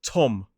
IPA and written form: tɒm (Tom)